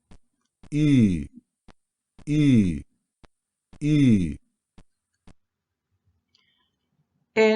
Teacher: tenemos que decir la y igual pero con los labios redondeados veamos cómo sale esto se va a alterar ligeramente su sonido · se va a alterar ligeramente su sonido por el redondea miento de los labios · en este caso es una cerrada anterior redondeada entonces tenemos que decir la y igual pero con los labios